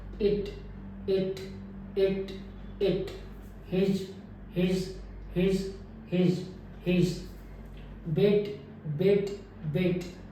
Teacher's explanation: जो इस साउंड की क्वालिटी है वो रिलैक्स वावल में काउंट होता है ज्यादा टेंस नहीं है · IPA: /ɪ/